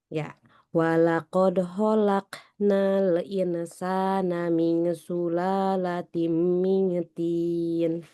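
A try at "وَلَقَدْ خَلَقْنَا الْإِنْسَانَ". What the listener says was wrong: Ya, gunnahnya dipanjangin lagi. Nih, insana walaqad khalaqnal insana dipanjangin.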